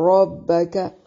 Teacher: ربک، را کو موٹا ادا کریں گے، با اور کاف کو باریک